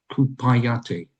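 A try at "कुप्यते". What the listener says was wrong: Remember, kupyate. Kupyate. It's just a pya there.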